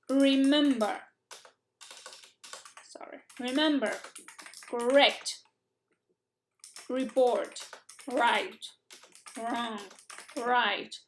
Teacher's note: La R inglesa es con la lengua hacia atrás, es una R velar